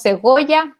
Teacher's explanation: la variación libre entre B y G, antes de una vocal O